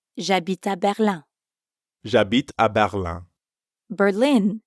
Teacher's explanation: berlin ends in i n which in french becomes uh ah another nasal sound